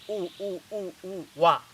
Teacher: You say U and immediately A without a break, you get Wa.